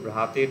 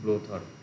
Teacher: তারপরে ইন্দো ইউরোপীয় ভ্রাতের থেকে হচ্ছে ব্রোথর, বিএইচ থেকে বি হচ্ছে, তাহলে এখানে ঘোষ মহাপ্রাণ বিএইচ থেকে পরিণত হচ্ছে ঘোষ অল্প প্রাণ বি